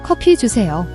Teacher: It's not a soft G sound like go, nor a completely unaspirated K. It's a strong K sound where you release a clear puff of air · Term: aspirated consonant